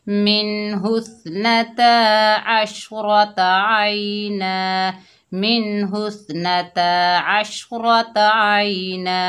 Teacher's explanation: वक्फ की हालत में दो ज़बर की तनवीन को हमने अलिफ मद्दा में बदल दिया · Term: वक्फ बिल इब्दाल